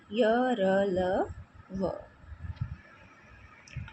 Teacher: जिन व्यंजनों के उच्चारण के समय जीभ मुंह के किसी भी हिस्से को अधिक नहीं छूती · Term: अंत सत व्यंजन